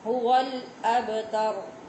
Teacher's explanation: با پہ قلقلہ ہوتا ہے تو آواز اس کی جب تک ٹکرائے گی نہیں با ادا نہیں ہوگا